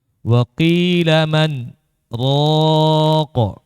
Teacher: Berhenti sesaat. Sekadar 2 harokat berhentinya. Ya. Tanpa mengambil nafas, kemudian berniat melanjutkan bacaan kembali. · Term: saktah